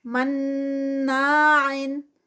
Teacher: یہاں پر غنہ آ گیا ہے، نون مشدد آ گیا ہے، تو اس کو ہم غنہ کریں گے، اور 2 کاؤنٹس کا اسٹریچ ہے. غنہ بھی 2 کاؤنٹس کا ہوتا ہے، غنہ کا اپنا جو ہے وہ 2 کاؤنٹس کا اسٹریچ ہے، اور جو یہ الف مد ہے، کیونکہ الف سے پہلے فتح ہے، زبر ہے، تو یہ بھی 2 کاؤنٹس کا.